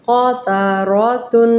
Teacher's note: دیکھیں اب غنہ کریں گے، ہم تنوین پہ غنہ کریں گے۔ تنوین مطلب غنہ کرنا، ناک میں آواز لے کر جائیں۔